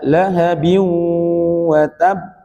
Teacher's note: Nah, kalimat wa tab di sini beberapa ulama mengatakan ini qalqalah akbar, bukan qalqalah kubro lagi, tapi akbar karena di situ ada tasdid dan kemudian baru dipantulkan